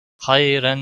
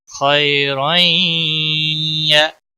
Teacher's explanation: तनवीन के बाद यरमलून का या आया है, इसलिए हमने तनवीन को या के साथ मिलाना है। खैरन नहीं पढ़ेंगे।